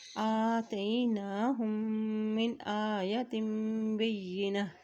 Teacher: حمزہ کے اوپر کھڑی زبر ایک حرکت لمبا ادا کریں · جب بھی میم کے اوپر شد آ جاتی ہے تو وہاں پر غنہ ادا کیا جاتا ہے